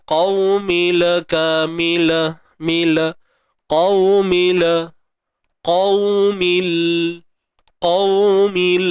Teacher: Bawa bunyi mim ni terus matikan lam, mil tanpa tawallud. Tanpa kita memberanakkan bunyi dia lah.